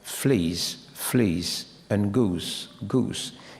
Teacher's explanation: it's difficult to um hear the difference very very clearly because these vowels in these contexts are very brief very short because of the S at the end